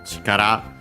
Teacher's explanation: chikara, on its own accent on the last syllable